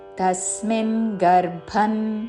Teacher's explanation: అనుస్వారము త వర్గములోని అనునాసిక అన్ ఉచ్చారణ